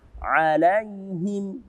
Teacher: Di sini juga ada fathah, kemudian bertemu dengan ya sukun, bermakna madlin atau mad layin. Lembut kita bacanya.